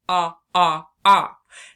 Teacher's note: the short O sound or the A sound is our widest sound. Our chin is much farther down than it was with our eye.